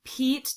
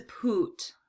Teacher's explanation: we're taking the front of our tongue and it's right up in the top front of our mouth and then we're dropping it way back and we're going all the way to the back part of